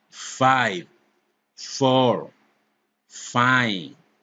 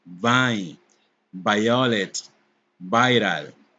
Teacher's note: Labiodental fricatives. These fricatives are made using the lower lip and the upper teeth.